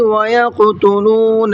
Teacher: ویق کے قاف میں قلقلہ کریں گے اور منہ بھر کے بھی پڑھیں گے